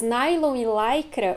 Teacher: Nas palavras nylon e lycra, o Y tem som de ai, ou seja, ele é um ditongo.